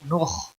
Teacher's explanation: خا حروف مستعلیہ میں سے ہے، موٹا پڑھیں گے